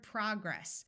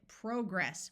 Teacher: which in American English has a short o sound whereas the British pronounce it progress with a clear long o sound